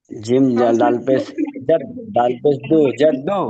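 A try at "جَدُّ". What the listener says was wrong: জিম দাল পেশ না, জিম দাল জবর জাদ।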